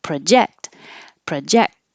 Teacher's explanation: if it's a verb project the verb the stress is on the second syllable